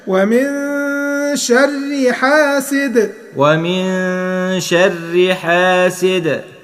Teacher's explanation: لو وقفنا هنقول حاسد نعمل قلقله في حرف الدال. طب لو وصلنا حاسد إذا، بص على التنوين تحت حاسد، التنوين شرطتين الكسرتين دول الكسرتين دول متساويتين مش بعاد عن بعض فايه لازم يبقى هنا في إظهار يعني ايه حاسد إذا.